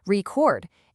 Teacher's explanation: If you stress the first part, record, it's the noun, the thing you listen to. But if you stress the second part, record, it's the verb, the action of recording something.